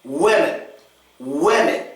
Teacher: And the second E gets the schwa. It's very unstressed and quick.